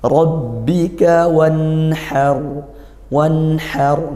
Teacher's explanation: nun sukun itu di lidah makhrajnya, sedangkan ha di tenggorokan bagian tengah, maka agak jauh sehingga dibaca izhar atau dibaca jelas seperti itu. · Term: izhar halqi